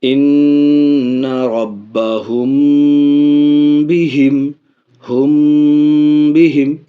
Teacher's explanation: کے ساتھ اخفاء ہوگا، اخفاء کے ساتھ غنہ ہوگا، تو دیکھیے اخفاء شفوی ناک میں آواز جائے گی